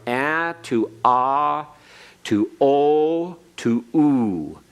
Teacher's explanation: the tightest formation of your lips in a circle is when you pronounce the u sound as opposed to o or ah ah your lips are relaxing ah you've got to Corners your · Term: rounding